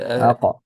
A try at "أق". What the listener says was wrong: this is this is when it's pronounced with قلقلة, but try to pronounce it without قلقلة. أق.